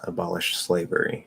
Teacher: you're supposed to slide from the SH into the S